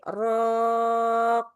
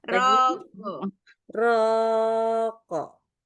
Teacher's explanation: Ini mad aridli sukun ya. Jadi, rnya harus panjang tuh.